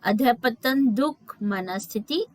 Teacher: इसका उच्चारण ह की तरह होता है